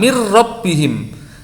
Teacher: nun sukun sama tanwinnya suaranya hilang itu idgham